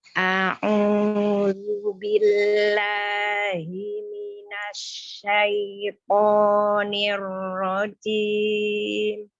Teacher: huruf ain itu sifatnya adalah tawasud atau bainiyah. Jadi antara sidah yang kuat dan rogoah tadi yang lembut.